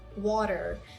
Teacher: So I'm not pronouncing da. Instead, I'm pronouncing my T as a very soft D. So it's water. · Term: flat T sound